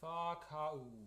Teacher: But it's important that we don't go whakau. There's no glottal, and then it's very smooth.